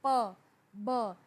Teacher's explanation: जब आप प और बा बोलते हैं तो आपका ऊपर वाला होठ जो है वो नीचे वाले होठ से टकराता है और नीचे वाला ऊपर वाले होठ से टकराता है, और इन साउंड्स को बाइलिबियल साउंड्स कहते हैं।